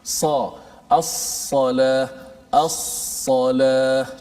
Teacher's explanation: Itbaq dari sudut bahasa melekat, dari sudut istilahnya terangkat lidah menutupi langit-langit semasa menyebutnya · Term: sifat itbaq